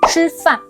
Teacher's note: in Chinese it's a bit sharper and more explosive. You curl your tongue up and keep your mouth rounded. Example 吃饭 吃 is not qi, it's a strong crisp sound with a burst.